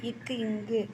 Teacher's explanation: வாய் திறக்கும் முயற்சியுடன் இதழ்களை குறிப்பதால் பிறப்பது உ ஊ. நாவின் முதற் பகுதி அன்னத்தின் அடிப்பகுதியில் பொருந்துவதால் பிறப்பது